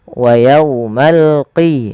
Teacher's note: Dia adalah huruf qaf ya, lebih tebal hurufnya dan dia sifatnya sifat isti'la, pangkal lidahnya terangkat.